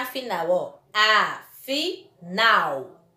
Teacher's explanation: observe que nas duas palavras a última sílaba foi pronunciada com mais intensidade portanto elas são palavras oxítonas